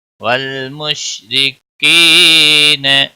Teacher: را کے نیچے زیر ہے، باریک پڑھیں گے